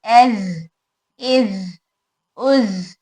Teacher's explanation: इसमें सीन और सौद में सिफत हमस है जिसकी वजह से हवा भी बाहर आ रही, एस, इस, उस। सौद ज में सिफत जहर है तो हवा बाहर नहीं आएगी